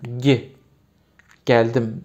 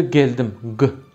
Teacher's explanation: Yani Türkiye Türkçesinde biraz damak. İngilizcesi palatal ses. Bizdeki velar ses.